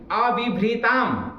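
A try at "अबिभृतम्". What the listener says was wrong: क्या बोले? भी कर रहे हो। भी क्या होता है? वह कहाँ है इसमें? वह कहाँ है?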